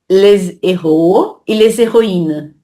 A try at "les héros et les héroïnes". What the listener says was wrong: Tu dis les héros. Donc, tu fais une liaison. Donc, si tu fais pas de liaison, tu peux pas dire les. Tu dois dire les. Les. Donc, les héros, les héroïnes. Héros, c'est un H aspiré. Héroïne, non.